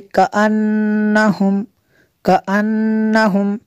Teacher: کأن، نون میں شدت ہے، یہاں پہ غنہ کریں گے۔